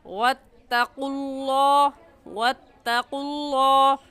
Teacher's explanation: واتقوا اللہ الذی، لفظ اللہ سے پہلے پیش آ گیا تو اس لفظ اللہ کو پوری یعنی موٹا کر کے پڑھیں گے، یعنی آپ کے دونوں ہونٹ گول ہو جائیں